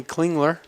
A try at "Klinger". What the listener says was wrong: I'm just going to help you out here, Coach. The L is silent at the end of Klinger. Klingler. It's a common mistake. It's a common mistake. The L is silent.